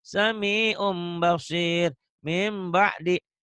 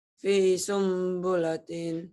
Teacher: Bunyi M tapi sedikit bindeng, sedikit samar. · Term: iklab